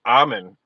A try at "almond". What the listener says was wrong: The force you're trying to put to get the L is ridiculous.